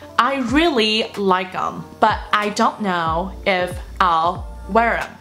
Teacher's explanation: them 的这个音就没有了，或者是这个动作就没有了